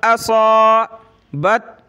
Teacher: صاد الف موٹا ہوگا